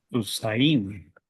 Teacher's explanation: This is a consonant with a vowel, the Heroic, and that is a diphthong, and that would be pronounced like it, AY.